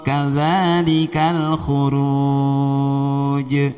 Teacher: Huruf jim pantunya ke e, huruf qaf pantunya ke o. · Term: qalqalah